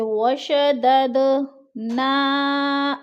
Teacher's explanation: خلقناہم وشددنا، وشدد دال ساکن حروف قلقلہ میں سے تو قلقلہ ہو رہا ہے، ادھر ہلا کر پڑھیں گے · 4 الفی مد ہے کیونکہ حروف مدہ کے بعد حمزہ دوسرے کلمے میں ہے تو مد منفصل، اس کو ہم نے 4 الف کے برابر لمبا کر کے پڑھنا ہے.